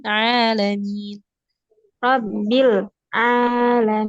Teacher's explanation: Ainnya perhatikan lagi dari tengah tenggorokan.